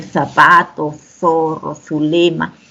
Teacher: Sabemos que la Z es una interdental que se pronuncia en zapato, zorro, zulema, pero que aquí en el Perú, en general, no lo utilizamos, ¿no?